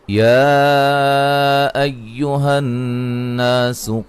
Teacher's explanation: نون مشدد پہ غنہ ضروری ہے